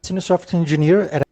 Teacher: So for instance, the word senior, they kind of deleted the last syllable. They kind of, where there should be a hidden Y sound, they kind of didn't do that sound. · They kind of where there should be a hidden Y sound, they kind of didn't do that sound. And where there should be a R sound towards the end, they kind of didn't do that sound.